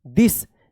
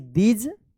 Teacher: यहां पे TH का अभी यहां पे द उच्चारण हो रहा है, सेम यहां पे थ उच्चारण हो रहा है। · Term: TH का द उच्चारण